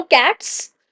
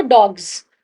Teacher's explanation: But the sound that is being produced is different. कैट्स में हम स का साउंड प्रोड्यूस कर रहे हैं। बट जब डॉग्स ज तो ज का साउंड प्रोड्यूस कर रहे हैं।